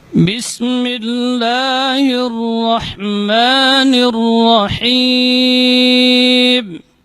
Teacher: Jadi merapatnya kedua bibir ketika mengucapkan huruf ba itu lebih kuat dibandingkan huruf mim.